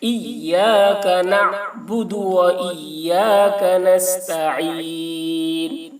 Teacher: عین کی ادائیگی حلق سے کریں گے